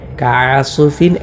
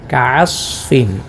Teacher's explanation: സ്വാദിനും ഖൽഖല കൊടുക്കേണ്ടതില്ലല്ലോ, കൊടുക്കാതെയാണ് ഓതേണ്ടത്. കഅസ്ഫിൻ എന്നല്ല, കഅസ്ഫിൻ.